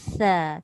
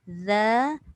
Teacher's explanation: Lebih kuat sa lah sebab dia lepas angin, lepas udara. Zal tadi dia hanya lepas suara sahaja.